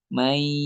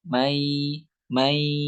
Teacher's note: may 50% dari hidung, 50% dari mulut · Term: gunnah